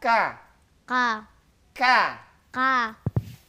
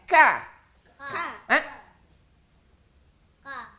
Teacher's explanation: Kalau agak ke belakang sedikit itu nantinya ada qnya maju sedikitnya ada huruf k-nya